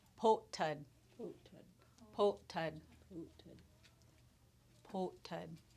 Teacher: We have a glottal stop in there, so we're going to pause.